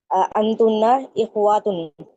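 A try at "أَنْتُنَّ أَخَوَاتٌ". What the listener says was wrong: नहीं, इखवातुन नहीं होगा। याद रखिए, मोन्नस जब आप इसकी बनाएंगी जमा तो जबर के साथ बनाएंगी। अखवातुन। जब मोनस बनेगी तो अलिफ के ऊपर जबर आएगा, और मुजक्कर में अलिफ के नीचे जेर होता है,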